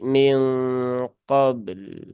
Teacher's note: nanti sifat lamnya berubah ya lamnya menjadi syiddah bnya tetap syidah maka bnya syidah tapi lamnya tawasud ya